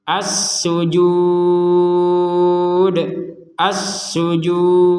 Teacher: jadi terakhirnya Dal itu dipantulkan